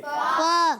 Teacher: اوپر والے دانتوں کے کنارے جب نیچے والے ان کے تر حصے سے لگتے ہیں تو ادا ہوتا ہے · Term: فا کا مخرج